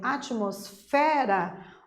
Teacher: a palavra atmosfera é considerada uma paroxítona porque a penúltima sílaba é a tônica